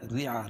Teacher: را باریک ہوگی کیونکہ را کے نیچے زیر ہے